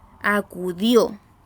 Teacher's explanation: Tenemos la palabra acudió, cuya carga de voz se recibe en la última sílaba. Acudió. Nosotros no decimos acudió, ni decimos acudió, decimos acudió. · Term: sílaba tónica